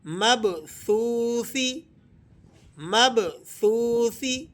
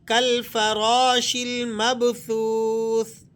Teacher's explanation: سا کو آپ نے زبان کی ٹپ تھوڑی سی باہر نکالیں دانتوں سے اور پھر اس حرف کو پڑھیں، کیونکہ سا میں آپ نے سیٹی داخل نہیں کرنی۔ اگر حرف سا کی ادائیگی میں آپ سیٹی داخل کر دیں گے تو اس سے یہ سین میں کنورٹ ہو جائے گا۔ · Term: بغیر سیٹی